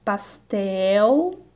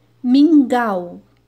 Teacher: Observe que as palavras que terminam com a letra L ou U têm o mesmo som, mas há diferenças entre a escrita e a fala. A letra L no final da palavra, quando pronunciada, a língua é elevada ao céu da boca.